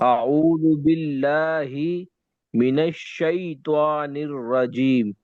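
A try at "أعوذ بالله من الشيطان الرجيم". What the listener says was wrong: پڑھ سکتے ہیں، کوئی بات، طا کو صحیح پڑھو، بس طا صحیح نہیں ہے آپ کی، طان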